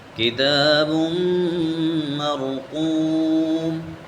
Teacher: میم کے اوپر شد ہے تو ہم اس پر غنہ بھی کریں گے اور اس کو سختی سے بھی پڑھیں گے۔